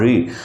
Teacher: ऋ के उच्चारण में जीभ मुर्धा की तरफ मुड़ती है जीभ का आगे का भाग जो होता है वो ऊपर घूमकर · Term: अग्र स्वर